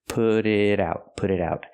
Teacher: put it put it out and the T and it is a fast D because they're both between vowels